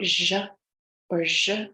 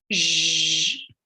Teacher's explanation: We want to be really careful that we're clipping that schwa sound that can tend to insert itself after the pronunciation of the phoneme.